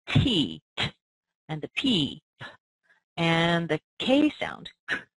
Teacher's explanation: put your hand on your throat if you test this out you'll notice that you don't feel any vibration in your throat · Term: unvoiced sound